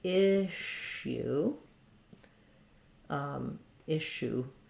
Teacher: this has first syllable stress the double s in this word says the sh sound